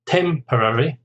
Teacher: Temporary is 4 syllables. Stress on the first syllable.